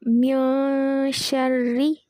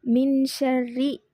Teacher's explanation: மியஷர்ரி இப்படி ஓதுறது வந்து இக்ஃபா வச்சு ஓதுறதோட சட்டம், நூனை நம்ம வந்து மறைச்சி ஓதுறது.